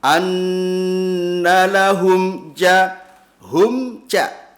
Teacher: Yang cara bacanya kudu dibaca jelas, nah, pendek, tidak ada dengungan sedikit pun. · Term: idhar syafawi